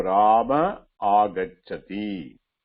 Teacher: The A followed by Visarga followed by A, Dirgha A. There again the Visarga will be dropped.